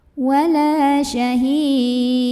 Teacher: Maka kalau berhenti, hi-nya ini boleh panjang 2, boleh 4 atau boleh 6 harokat, asal konsisten dalam satu kali membaca.